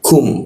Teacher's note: Nun mati bertemu ka gitu menjadi dengung, kita tahan 2 ketukan.